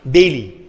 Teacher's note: So my tongue, the tip of my tongue, it touches the alveoli of the palate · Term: alveolar